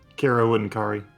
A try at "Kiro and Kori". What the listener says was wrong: No, it's Kiro and Kori. There's an O, not an A.